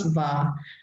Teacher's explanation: there's a clear change in the tone and the final coda is being deleted. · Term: coda deletion